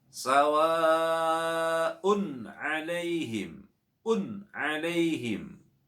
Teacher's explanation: Ada tanwin dhammah bertemu dengan ain, juga wajib dibaca idhar. Wajib dibaca jelas. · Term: idhar halqi